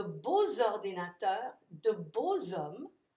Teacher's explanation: it provides you with the opportunity to do a liaison that sounds like zzz